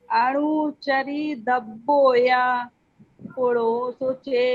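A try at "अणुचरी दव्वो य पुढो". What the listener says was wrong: क्या में डंडा लगा है, बड़ा या है कि छोटा, या बड़ा है कि छोटा? तो छोटा पढ़िए फिर।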